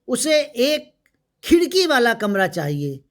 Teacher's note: खिड़की शब्द पर बल दिया गया है